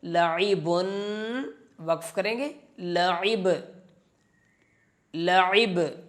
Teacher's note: با کے اوپر جب سکون آتا ہے، جزم آتا ہے تو اس کو ہلا کر پڑھتے ہیں، قلقلہ کرتے ہیں